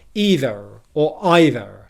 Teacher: In American English, the only difference is their vowel sounds might have slightly different qualities to how we say them in British English, and you might get a rhotic R being pronounced on the end of either, so you'd get either or either.